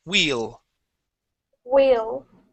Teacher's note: at the end of that word you added a t okay we want to end with an L